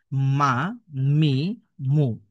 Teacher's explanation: মিম অক্ষর দুই ঠোঁটের শুকনা জায়গা থেকে পড়তে হয়।